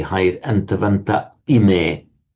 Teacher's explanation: This is the masculine plural nominative, antavantaha, with the visarga standing on its own, but the aha before the I, what happens is you drop off the visarga, so you have the antavanta ime, and you have the hiatus there